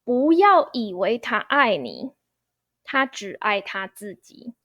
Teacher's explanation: The answer is second tone 不 instead of fourth tone 不. This is due to the 不 character tonal modification.